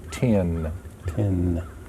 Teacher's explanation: you notice that your tongue hits the roof of your mouth twice